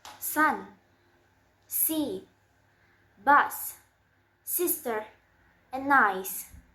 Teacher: It's voiceless, and the place of articulation is alveolar, and the manner of articulation is fricative.